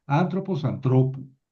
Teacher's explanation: si yo le pongo una vocal larga, que es la del genitivo u, Cambiado. tengo que mover el acento.